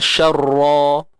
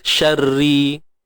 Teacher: Dia baris bawah dia nipis, ri. Kalau sabdu baris atas, syarra, tebal. Kalau nipis, syarri, ra baris bawah.